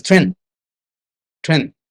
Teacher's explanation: That last D cannot be heard. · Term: not pronouncing the last consonant